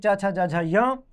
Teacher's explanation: ये तालु से बोले जाते हैं, इसलिए इन्हें तालव्य वर्ण कहते हैं